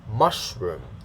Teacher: the first one is stressed, so it has a higher pitch, da, and then the second syllable is unstressed, so lower pitch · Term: Stress syllable